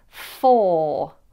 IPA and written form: fɔː (for)